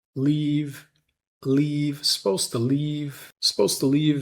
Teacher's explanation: So leave gets a little bit of stress being the last word in that thought group. And it gets stretched a little. The vowel gets stretched.